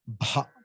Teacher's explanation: add one ha, small ha to it, add one prana to it, it becomes bha, mahaprana.